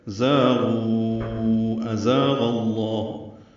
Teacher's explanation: تیز صفیر کی آواز سے زا ادا کریں گے